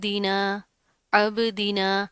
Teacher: अब यहाँ पर क्या है, बा के ऊपर फिर जज्म आ रही है, तो जिस हर्फ के ऊपर हरूफ कलकला के जो हरूफ थे कुतुबुज्जद्दीन, तो ये उनमें से है, बा के ऊपर जज्म आ रही है, तो यहाँ पर हम कलकला करेंगे